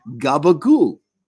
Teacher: The second to last vowel, an O sound, gets raised. So change it to an oo and toss out the last syllable.